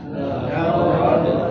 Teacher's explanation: Laqad dal sukun wajib dipantulkan di saat membunyikannya karena masuk pada hukum qalqalah. Laqad qalqalahnya qalqalah kecil, jangan ditahan, jangan baca begini laqad, salah.